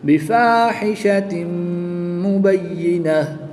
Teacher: گولتا کو وقف کی حالت میں ہا ساکن سے تبدیل کر کے پڑھیں گے